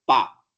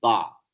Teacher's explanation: In Arabic, there is no voiceless bilabial plosive called pa, and that is substituted with another voiced bilabial plosive called ba.